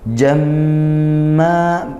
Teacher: Jamma, mim bertasydid dibaca gunnah dengung ya.